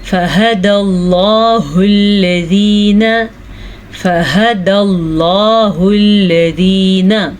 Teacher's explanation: लफ्ज़ अल्लाह को पुर पढ़ेंगे, लफ्ज़ अल्लाह से पीछे वाले हर्फ पे ज़बर की वजह से